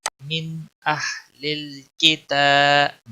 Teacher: من نون کو ظاہر کر کے پڑھیں گے. اہلل کتاب تا کے اوپر کھڑی زبر ہے ایک الف کے برابر اس کو کھینچنا ہوگا